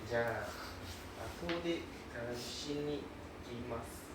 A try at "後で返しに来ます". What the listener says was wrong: Your intonation go up and down very wild. Very wild. 後で. There is the intonation a bit weird.